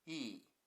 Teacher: In E the first mora is pronounced high pitched and the second low pitched.